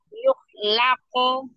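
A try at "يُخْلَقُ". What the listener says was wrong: Bukanlah. Off-nya sukun ya, bukan fathah. Yukhlaqo.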